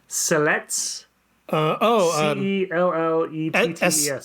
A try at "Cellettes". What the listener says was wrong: I don't think you pronounce the terminal S.